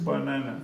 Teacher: first and third are schwa. Because banana, because the stress is in the second one.